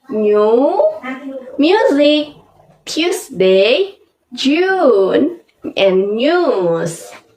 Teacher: there is often a y sound before the u